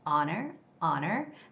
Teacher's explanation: the word, let's say, honor has no sound for H, okay? It's It's silent H.